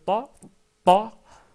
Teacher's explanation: attacher le bout de la langue avec le palais qui est proche des incisifs supérieurs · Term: même point de sortie